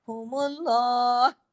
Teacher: فَسَيَكْفِيكَهُمُ اللَّهُ، اگر ملا کے پڑھیں گے تو ہم اللہ، اللہ کا نام سے پہلے اگر زبر یا پیش ہو تو لام ہیوی ہو جائے گا. تو یہاں پہ لام ہیوی ہو رہا ہے، کیوں؟ میم پہ پیش ہے اس وجہ سے. فَسَيَكْفِيكَهُمُ اللَّهُ، اگر رکتے ہیں تو ہم اللہ، ہاں کی آواز آپ کے گلے میں سنائی دینی چاہیے.